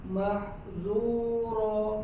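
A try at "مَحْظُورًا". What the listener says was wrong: Masih tipis. Jangan zu. Mahzu. Pangkal lidahnya sedikit dinaikkan.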